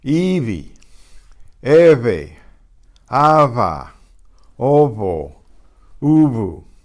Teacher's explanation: Between vowels, it gets softened to more or less a buzz.